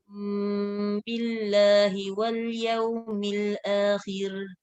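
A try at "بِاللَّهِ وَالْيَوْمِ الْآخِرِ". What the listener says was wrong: Tak kena sakta. Wal yaumil akhir. Dia tak ada tahqiq. Wal yaumil akhir. Bila waqaf tak ada tahqiq. Ya, khalaf ke khalat ke tak ada tahqiq kalau waqaf.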